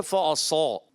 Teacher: صاد بھی موٹا اس کا الف بھی موٹا